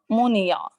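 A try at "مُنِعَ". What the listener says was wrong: نون کی زیر کو اور باری کریں. میم کے پیش کو بھی وہ کریں.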